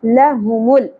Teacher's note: لام ساکن پہ ایک بات کا دھیان رہے کہ قلقلہ نہ ہونے پائے